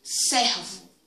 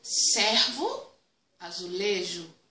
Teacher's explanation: Em servo, a pronúncia, de acordo com a ortoépia diz que servo, essa vogal E, ela é aberta. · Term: E aberto